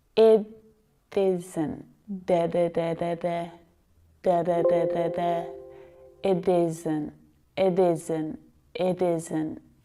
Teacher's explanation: I'm just flicking my tongue ever so quickly up behind my teeth on the gums